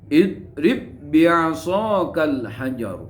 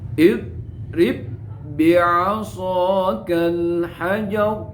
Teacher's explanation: Lafaz idrib itu ba sukun bertemu dengan ba tidak boleh dikolkolakan, harus diidghamkan. Idrib harus dimasukkan pada huruf yang kedua. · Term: idgham mislain